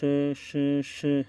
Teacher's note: हमारे मुख के अंदर क्या होता है, एक प्रकार का एक घर्षण होता है। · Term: ऊष्म व्यंजन